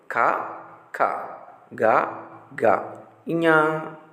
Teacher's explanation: ఈ అక్షరాలను పలికేటప్పుడు శబ్దం మీ గొంతు లోపల నుండి వస్తుంది. అందుకే వీటికి కంఠ్యాలు అనే పేరుంది.